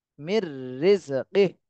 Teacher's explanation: তাহলে মিম র জের মির মির এখানে হচ্ছে ইদগামে বেলাগুন্না হয়েছে নুন সাকিনের পরে র এজন্য গুন্না ছাড়া মিলাতে হবে